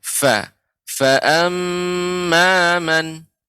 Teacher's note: ketika mengucapkan fa lebih ditampakkan lagi aliran udaranya